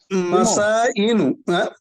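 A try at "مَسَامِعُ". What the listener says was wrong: মাসাইমু ভাই লাস্টে মিম মাসাইমু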